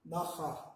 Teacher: It's kind of like a guttural in German. Naha, like ha, with inflection in the back of your throat.